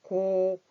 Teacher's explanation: 입이 동그랗게 오므려지고 있죠? 동그란 소리.